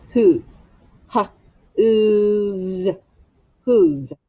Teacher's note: it's a vowel consonant e word but it's it's not because this o makes the ooh sound not the o sound and the s makes a z